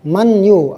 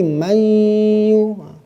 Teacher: Jadi memasukkan itu huruf pertamanya hilang. Huruf kedua itu dibaca dengan tasdid. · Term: idgham bi gunnah